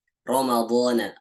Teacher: rok itu dibaca tebal misalnya Ramadan ketika Rock itu berharakat fathah ketika roh berharokat fathah dibacanya tebal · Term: tafkhim